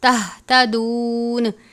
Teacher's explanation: گول والی ہا ہے یعنی موٹے والی ہا، حلق سے آخر سے پڑھتے ہیں